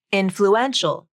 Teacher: when you add the ial ending the primary stress shifts to the third syllable